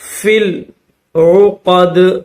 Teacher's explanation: یہ یا نہیں پڑھی جائے گی بلکہ فا کو ڈائریکٹ لام کے ساتھ ملا کر پڑھیں گے